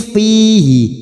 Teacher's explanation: fi kasrah bertemu ya sukun dua harokat